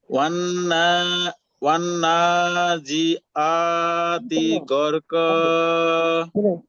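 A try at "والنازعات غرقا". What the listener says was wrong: হ্যাঁ হয়েছে,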